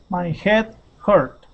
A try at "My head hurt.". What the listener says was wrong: Perfect. That's it, man.